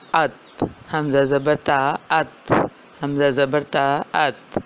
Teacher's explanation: جہاں اس کی حرف کی آواز ٹھہر رہی ہے، یعنی کہ زبان کی نوک جو ہے وہ اوپر والے اگلے 2 دانتوں کی جڑ سے لگ رہی ہے، تو یہی اس کا مخرج ہوگا۔